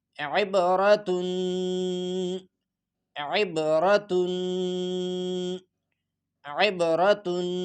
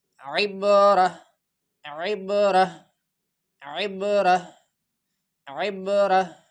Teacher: وقف کی صورت میں جب ہم اس پہ سٹاپ کریں گے تو لاسٹ والا جو آخر گول تا لکھا ہے اس کو ہاں پہ کنورٹ ہو جائے گا۔ عبرہ عبرہ عبرہ عبرہ، عین با زیر عب، را زبر عبر، تا دو پیشتن، عبرتن، وقفا عبرہ۔